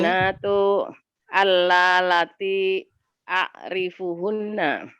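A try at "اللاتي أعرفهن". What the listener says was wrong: Iya, jadi bukan alalati, allati. Iya, allati a'rifuhunna. Itu lamnya kelihatan double ya, alalati ya. Betul, allati atau allai ya.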